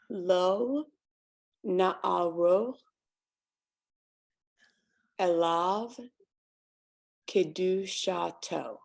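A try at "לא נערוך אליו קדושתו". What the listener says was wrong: There you go.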